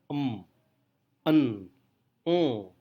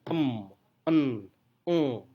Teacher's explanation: Contoh suara tersebut adalah en, Nah, saat kita mengucapkan en, udara tidak keluar dari mulut, tetapi keluar dari hidung. Walaupun saat kita mengucapkan bibir kita terbuka, namun udara tidak keluar dari mulut. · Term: nasal